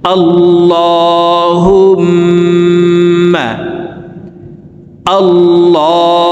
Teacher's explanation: এই পেশওয়ালা হাটি তাসদীদওয়ালা মিমের সাথে 3 সেকেন্ড পরিমাণ গুন্নাহ করে ধরে রেখে পড়ব